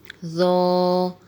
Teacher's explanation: ظا جو ہے یہ نرمی والے حروف میں سے ہے اور موٹے حروف میں سے بھی ہے. ظا کا مخرج یہ ہے کہ زبان کی نوک اوپر والے دانتوں کے اندرونی کنارے سے لگے تو ظا ادا ہوتا ہے